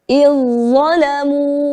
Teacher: Maka cara membacanya adalah kita leburkan huruf zal kepada huruf za. Huruf yang kedua menjadi iz zalamu. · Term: idgham